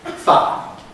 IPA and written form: faə (fire)